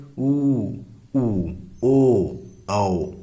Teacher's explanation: वृत्त के समान मुख गोलाकार हो जाता है